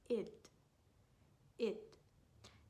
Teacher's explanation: It's a very short and unstressed sound that we use to pronounce the ed ending. This is used when the verb in its base form ends with the t or the d sound.